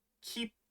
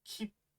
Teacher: you're really just extending that P sound and holding on to it for a little extra beat it's almost like you pause in the middle of the word